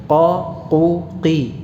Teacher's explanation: Durasi yang kita butuhkan mengucapkan qa yang berharakat fathah sama dengan yang berharakat dhammah qu, sama juga yang berharakat kasrah qi. Qa qu qi, sama satu harakat.